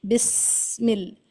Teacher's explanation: بسم اللہ میں جب آپ بسم اللہ کو پڑھتی ہیں تو بس میں دانتوں دونوں منہ کے اندر کے جو اوپر نیچے کے دانت ہیں وہ قریب ہو جائیں اور پیسج اتنا تنگ ہو جائے کہ ایک ساؤنڈ آف وسل سیٹی کی ساؤنڈ سنائی دینے لگے